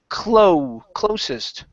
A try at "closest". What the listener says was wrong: Okay, give me a good S sound instead of closest. Closest.